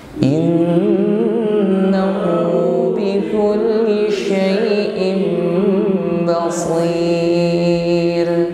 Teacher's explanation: Kembali ra dibaca tarkik, tipis.